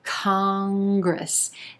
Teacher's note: 2 syllables here, emphasis on the first syllable and the ah as in olive vowel sound. Congress. Then that N is going to be an ing sound.